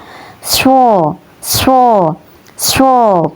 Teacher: Huruf shod ini ya keluar dari ujung lidah yang menempel pada dua gigi seri bawah. Cara melafalkannya sho, sho, sho, begitu ya teman-teman.